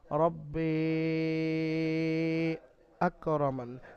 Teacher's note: হামজা অন্য শব্দে আসার কারণে এখানে মাদ্দে মুনফাসিলের কায়দা ব্যবহার হয়েছে। মাদ্দে মুনফাসিল 3 থেকে 4 আলিফ পরিমাণ টান দিয়ে পড়তে হয়। 1 আলিফ পরিমাণ টান দেওয়া জায়েজ আছে, তবে উত্তম 3 থেকে 4 আলিফ পরিমাণ টান দেওয়া।